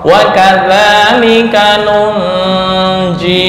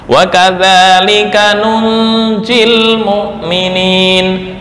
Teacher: ketika wasal, bacaannya itu dihapus huruf terakhir. Nunjil, ya dihapus ketika wasal.